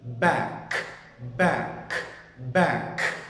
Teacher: mình còn có sự bật của âm b ở đầu b và âm k ở cuối